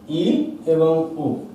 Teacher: তো যখন আমরা ই এবং উ এই দুটো স্বরধ্বনি উচ্চারণ করি তখন জিহ্বা সর্বোচ্চ স্থানে থাকে, মুখের উপরে সব থেকে উঁচু জায়গায় থাকে, তাই এই ই এবং উ এই দুটো স্বরধ্বনিকে আমরা বলছি উচ্চস্বর, ই এবং উ।